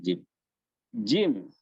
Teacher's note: ketika kita mengucapkan kita menahan udara untuk lewat, yang kemudian di situ ada penyempitan, kemudian ada ihtikak, pergeseran, dan suara yang terkait dengan murokabah seperti ini hanya suara bunyi huruf jim. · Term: aswat murakkabah